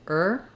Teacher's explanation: an R together to make this sound it's not two sounds I'm not saying uh and er I'm just saying ER as one sound but is written with two symbols to represent that it's that